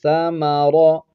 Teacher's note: سا ما اس کو نہیں کھینچیں گے، اور را پر زبر ہے، را کو موٹا کر کے پڑھیں گے